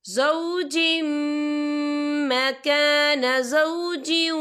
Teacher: وَإِنْ أَرَدْتُمُ اسْتِبْدَالَ زَوْجٍ مَّكَانَ زَوْجٍ وَآتَيْتُمْ، یا دیکھیں زوجم، جیم کے نیچے تنوین ہے، تنوین کے بعد جو ہے میم آ رہا ہے، اور میم جو ہے حروف یرملون میں سے ہے، تو یہاں پر ادغام ہوگا، تو ہم اسے غنّے کے ساتھ پڑھیں گے